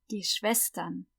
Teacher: SCH is always sh, and the W is always v, like a V